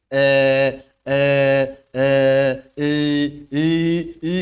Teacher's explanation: kalau lidah kita enggak naik tengahnya maka suaranya akan menjadi e